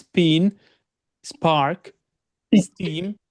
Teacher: বাতাস বের করছি না, নর্মাল বলতে হবে এখন, কারণ এটা কনসোনেন্ট সাউন্ডের সাথে আছে।